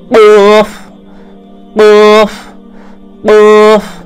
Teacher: मखरज जबान की जड़ और उसके मुकाबल ऊपर का तालु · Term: कौफुक मखरज